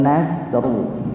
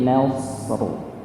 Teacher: Huruf nun itu huruf tipis. Huruf shad, ini huruf shad, huruf sha itu dibaca tebal.